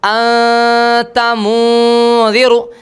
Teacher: اخفاء حقیقی جیسے کہ نون ساکن کا اخفاء انت منذر، یہاں پر ناک میں آواز تو جا رہی ہے لیکن دونوں ہونٹ کھلے ہوئے ہیں، نون کا مکمل مخرج ادا نہیں ہو رہا.